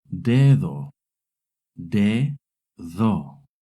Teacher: When the D is between two vowels, it makes a soft D sound, similar to the TH in English.